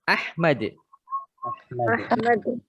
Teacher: Nah, mimnya tidak usah dipanjangkan.